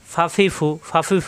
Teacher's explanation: উপরে দুই দাঁতের আগা, নিচে ঠোঁটের পেটে লাগবে।